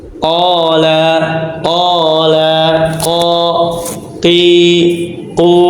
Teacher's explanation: dia di aljauf di rongga tenggorokan